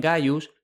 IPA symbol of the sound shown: g